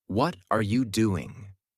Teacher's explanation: with their voice Rising on what and falling on doing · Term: intonation